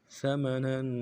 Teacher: باریک ادا کرنا ہے، میم کو نرمی سے ادا کریں گے، نون کے اوپر تنوین ہے، غنہ کریں گے، غنہ کو ایک دان میں کھینچیں گے · قاف کو موٹا ادا کرنا ہے ، لام کو یا کے ساتھ ملانا ہے، یا مدہ ایک